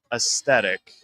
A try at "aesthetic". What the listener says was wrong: Yeah, there's no T in it.